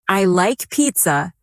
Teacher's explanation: Let your voice fall gently at the end.